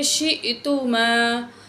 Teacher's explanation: حمزہ ساکن ہے، جھٹکے سے پڑھیں گے